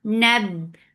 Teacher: Nab for fatha open jaws attached with ba, ba will get sifa of shidda and shidda is cutting off the sound